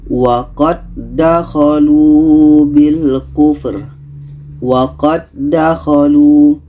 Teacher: waqad dakholu itu tidak boleh karena ini Idam mutam Silen jadi Dal yang pertama kita masukkan ke Dal yang kedua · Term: idgham mutamathilain